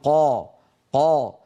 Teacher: انظروا الى لسان المزمار وقد رجع قليلا الى الخلف وصار قريبا من الجدار الخلفي للحلق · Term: التفخيم